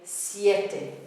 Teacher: The beat on the strong e, siete, 2-syllable word